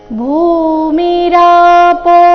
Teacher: ದೀರ್ಘ ಭೂ ಮಹಾಪ್ರಾಣದಿಂದ ಶ್ಲೋಕ ಪ್ರಾರಂಭ ಆಗ್ತಾ ಇದೆ